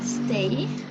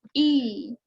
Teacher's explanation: cuando pronunciamos esta última I, sí hay vibración en la garganta